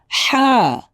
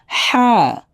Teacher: গলার ভিতরে হালকা একটু চাপ হবে, হা। অনেকে অনেক ভিতরে নিয়ে যায়, অনেক ভিতরে নিয়ে আসলে কিন্তু উচ্চারণ সুন্দর আসবে না। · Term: হায় হুত্তি